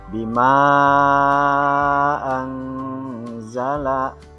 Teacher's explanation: Itu terdapat 2 kalimat, mad yang terdapat pada kalimat yang pertama dan huruf yang terdapat pada kalimat yang kedua, ini disebut dengan mad jaiz munfasil. Maka cara bacanya panjang 4-5 harokat.